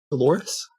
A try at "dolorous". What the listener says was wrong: It's not Dolores. It's Dolores. You're putting emphasis on the wrong syllable, which is why I keep saying that I'm the one that should be reading the audiobook.